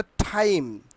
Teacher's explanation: এক বা দুই সিলেবল যুক্ত শব্দের শুরুতে টি এর উচ্চারণ এতদিন যেখানে আমরা টয়ের মতো উচ্চারণ করেছি, এখন থেকে এসব জায়গায় ঠয়ের মতো উচ্চারণ করব। ওকে, আমরা টয়ের জায়গায় ঠয়ের মতো উচ্চারণ করব।